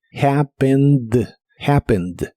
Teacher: Es similar a la forma del presente, pero como es un verbo regular, ahora termina con ed y no se pronuncia esta última E, solo la D